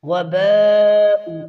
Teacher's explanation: وباء یہاں پر مد متصل ہے، 5 الف کے برابر کھینچیں گے.